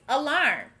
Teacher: notice that this word begins with the uh sound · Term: schwa